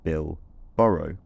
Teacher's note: I can also say bill, borrow with an unaspirated, voiceless plosive